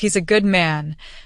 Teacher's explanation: He is a good man becomes he's a good man. The is and a both shrink. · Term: reduced forms